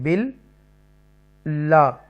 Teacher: لام مشدہ twice time پڑھا جائے گا, بل اور پھر لا.